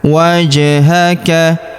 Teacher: Huruf ja berharokat sukun kita pantulkan atau kita qalqalahkan.